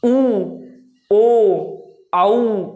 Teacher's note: जैसे आप बोलेंगे ऊ, तो ऊ मैंने बोला तो मेरे होठ की स्थिति बिल्कुल गोलाकार हो गई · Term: वर्तमुखी स्वर